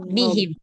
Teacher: Jadi melebur dia benar-benar nunnya itu memang sudah melebur ke huruf idgham, jadi nggak kedengaran lagi suara nunnya.